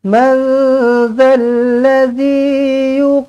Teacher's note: Nun kosong bertemu dengan ذَال, ikhfa hakiki, dengungkan dengan dua harakat.